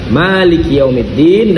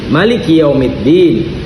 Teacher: Ada yang dibaca ma tidak panjang dan ada yang dibaca maknya panjang.